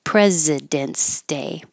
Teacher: The S in the middle sounds like a Z.